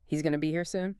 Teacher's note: He's a contracts to he's and going to becomes gonna.